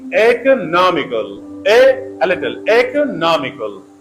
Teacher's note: the first syllable has a secondary stress and the third Sy has the primary stress the word economical · But the third syllable na, it has main stress, primary stress. It is pronounced the most loudly.